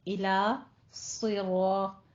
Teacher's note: را بھی پر ہے، صاد بھی پر ہے، طا بھی پر ہے. آگے مستقیم میں آپ نے تا کو باریک رکھنا ہے، مستقیم نہیں کہنا. · الا کے بعد صاد آ رہا ہے تو الا کو باریک رکھنا ہے، الو نہیں کہنا